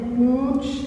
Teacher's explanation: आवाज आते समय हवा नाक और मुंह दोनों से निकलती है · जैसे पूंछ शब्द का बोलिए, पूंछ ऊ के साथ जब हम बोल रहे हैं पूंछ, तो आवाज जो आ रही है नाक और मुंह दोनों से आती है, तो यहाँ पूंछ ऊ के साथ अनुनासिक है